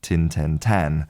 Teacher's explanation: the vowel in the number 10 can move more towards an a and it can sound more like tan